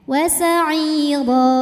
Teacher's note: Ro dibunyikan secara tafkhim karena harokatnya di atas, maka bacanya tebal. Ro apabila berhenti ada mad namanya mad iwad karena ada harokat tanwin fathah yang diberhentikan. Cara bacanya panjang 2 harokat tanpa huruf n.